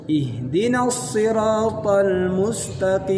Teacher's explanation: Nah, ini masuk ke tenggorokan. Sedangkan makhrajnya qaf ini bukan di tenggorokan tapi di pangkal lidah.